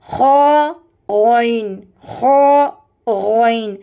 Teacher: ابتدائی حلق یعنی حلق کا اوپری حصہ جو منہ کے قریب ہے، یہاں سے غین اور خ ادا ہوتا ہے، جسے ہم کہیں گے top of the throat, upper throat, خ غین، خ غین، اور یہ موٹا حرف ہے۔